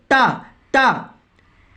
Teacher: टा बोलेंगे, ठा बोलेंगे तो आपकी जीभ दांत के ऊपर स्पर्श करेगी। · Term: मूर्धा